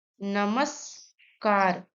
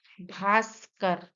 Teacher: कुछ शब्दों में विसर्ग का स हो जाता है